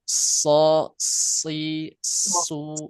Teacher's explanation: Tambah ee desis di shadnya